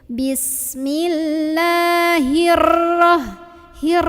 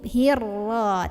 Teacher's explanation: getaran pada ro ini tidak jangan berlebihan